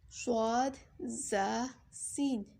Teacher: ज़ुबान की नोक और दोनों दांतों के अंदरूनी किनारे से अदा होते हैं